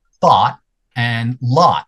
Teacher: the people around me here in Canada, most people in Canada, those are the same sound.